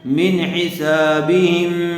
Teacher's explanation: نون ساکن کے بعد حروف حلقی میں سے ہا آیا ہوا ہے، اس لیے بغیر غننے کے جلد اظہار کر کے پڑھیں گے